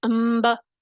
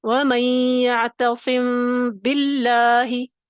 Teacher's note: تری والے حصے سے با کو بھی ادا کرنا ہے، سختی سے، بھینچنا نہیں ہے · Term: اخفا کا طریقہ